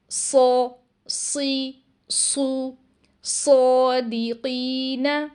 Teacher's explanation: اب اس تصویر کو ذرا دھیان سے دیکھیں۔ صاد کی ادائیگی کے لیے زبان کی جڑ کو بھی اوپر اٹھایا جاتا ہے اور آواز کو اس حصے میں ٹریپ کر دیا جاتا ہے تاکہ ہمیں اس کی آواز ہیوی سنائی دے